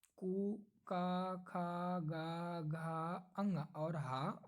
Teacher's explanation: इन 8 वर्णों की उत्पत्ति कंठ से होती है। कंठ से माना गया है।